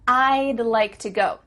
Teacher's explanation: to go do you see how we can speak quicker because we're cutting off all the sounds in the word would except for that final D